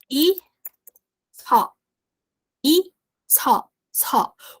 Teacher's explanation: O SS, quando ele tá duplicado, ele é um S, só que ele é mais aspirado